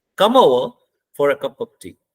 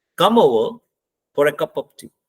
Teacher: देखो टी पे आते हुए हमारी आवाज डाउन होगी। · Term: फॉलिंग टोन